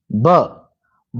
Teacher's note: ओष्ठ भी है, अल्पप्राण भी है और घोष भी है